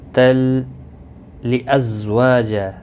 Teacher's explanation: تنوین کے بعد یرملون کا لامہ ہے، ادغام ہوگا لیکن گنہ کے بغیر